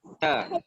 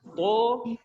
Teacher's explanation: huruf to ni dia tebal. Jangan samakan to ataupun bunyikan to macam bunyi ta.